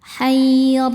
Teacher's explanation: Huruf ra dibaca tafkhim karena ada baris fathah. Cara bacanya ra dibaca dengan tebal.